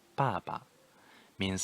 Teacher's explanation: fourth tone plus neutral tone, the same character, 爸爸 means father.